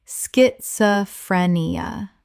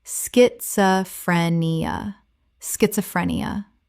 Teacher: The SCH makes a sk sound. 5 syllables.